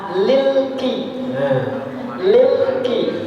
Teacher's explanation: Alnya itu ketika bertemu dengan huruf Qamariyah, alnya jelas. Makanya idhar namanya. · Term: Idhar Qamariyah